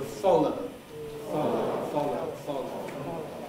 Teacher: The L, on the other hand, the lateral, so-called because the air escapes laterally, that's on one side or the other, because the tongue tip in the middle is in contact.